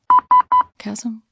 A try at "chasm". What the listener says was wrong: I think you don't pronounce the H. That was a hard H.